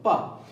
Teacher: जब आप प का उच्चारण करते हैं तो आपके दोनों होंठ जुड़ जाते हैं। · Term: स्पर्श